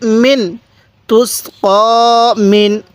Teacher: নুনটা গুনাহ করবো না স্পষ্ট করে পড়বো কেন নুন সাকিনের পরে আইনটি হলো ইজহারের হরফ এজন্য আমরা নুন